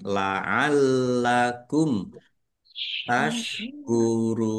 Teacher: Lamnya ada tasdidnya dibaca dobel ya. Ditekan.